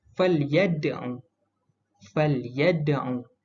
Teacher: huruf dal ni berada di tengah kalimah dan dibaca dengan detakan yang perlahan. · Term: qalqalah sughra